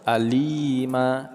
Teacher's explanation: li kita panjangkan 2 harakat atau 1 alif, ma juga kita panjangkan 2 harakat atau 1 alif, nama adalah mad iwad.